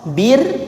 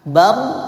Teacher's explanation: Jadi tadi kalau dia kasroh bir ditipiskan. Nah, kalau dia tebal, kalau dia fathah bar ditebalkan.